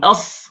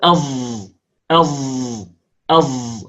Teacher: الصاد المشمة صوت الزاي هي صاد مجهورة، صاد مجهورة.